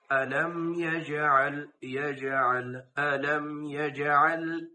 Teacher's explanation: জিম এটা হচ্ছে কলকলার হরফ। এটা যখন আদায় করবো আমরা কলকলা আদায়, এখানে কলকলা করতে হবে।